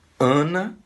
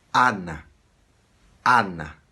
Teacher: Em português, nós fazemos soar som nasal, Ana, mas em espanhol não. Esse A em espanhol soa um A aberto, soa Ana.